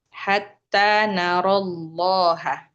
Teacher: dalam membaca ini kita tidak boleh memanjangkan matnya. Disebabkan apa? Disebabkan ada sukun. Jadi dua sukun. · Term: pertemuan dua sukun